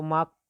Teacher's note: तो माँ बोलने पर दोनों ओठ काम करते हैं, बा बोलने पर दोनों ओठ काम करते हैं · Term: ओष्ठ